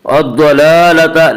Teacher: حروف مستعلیہ 7 ہیں جو ہمیشہ ہر حال میں پر پڑھے جاتے ہیں، اس لیے ضاد کو بھی پر پڑھیں گے